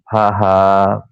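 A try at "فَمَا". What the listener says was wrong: না ওটা হা নয়, ওটা হা নয়।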